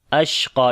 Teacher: ہی آواز کو بالکل جاری کریں گے، درمیانی پوزیشن ہوگی۔ اشقا، شین کے اوپر صفت تفشی کریں گے اور سانس کو بھی جاری کریں گے، قاف کو موٹا پڑھیں گے